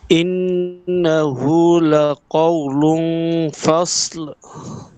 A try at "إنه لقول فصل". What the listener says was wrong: হয় নাই, সুন্দর হয় নাই। এবং গুন্নাটাও কিন্তু আপনি গুন্নাটা মোটা করে ফেলাইছেন। দেখেন, লাকাউলুন, এই যে লাকাউলুন, লাম ২ পেশ, লুন, তানউইনের পর কি আসছে? ফা আসছে। ইকফার হরফ কয়টা আমরা জানি? ১৫টা না? এই ১৫টা হরফের মধ্যে ৫টা হরফ মোটা। স, দ, ত, য, ক। এই ৫টা হরফ যদি আসে তাহলে গুন্নাটা মোটা হবে। বাদবাকি হরফ আসলে গুন্না মোটা হবে না। তাহলে আসছে কি? ফা। তাহলে গুন্নাটা মোটা করার কোনো কারণ নাই।